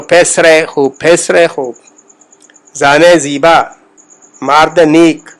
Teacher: یعنی اگر ہم مثال دیں تو اس میں فارسی میں جو یائے مجہول جس کو کہتے ہیں، جس کو ہم بڑی یا بھی بولتے ہیں، اردو میں تو استعمال ہوتی ہے لیکن فارسی میں وہ یائے مجہول کا کوئی تصور نہیں ہے، یا معروف ہی چلتی، چھوٹی جی جسے ہم بولتے ہیں.